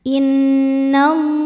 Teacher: Allah mad tabi'i muqaddar karena huruf lam berbaris fathah panjang, maka lam panjang 2 harokat.